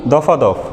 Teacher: মাঝখানে একটি আ স্বরধ্বনির আগমন ঘটেছে, যেহেতু মধ্যে একটি আ স্বরধ্বনির আগমন ঘটেছে এবং শব্দ দুটো একই, এজন্য এর নাম হচ্ছে অসমীকরণ।